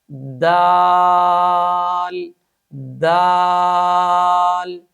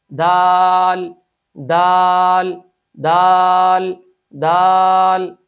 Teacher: صفت شدت کی وجہ سے اس حرف کو سختی کے ساتھ ادا کیا جائے گا